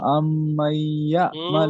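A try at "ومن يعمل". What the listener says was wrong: হুম ওয়া আম কোথায় পাচ্ছেন? ওয়া মাই ইয়ামাল।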